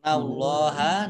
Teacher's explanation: nun tasdid dibaca mendengung ditahan 2 harokat · Allahnya dibaca tebal karena harokat di depannya fathah